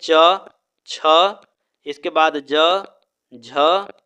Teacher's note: इतने वर्णों का उच्चारण स्थान तालु होगा